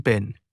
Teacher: a strong burst or puff of air that accompanies the release of certain voiceless stop consonants like the P in pin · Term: aspiration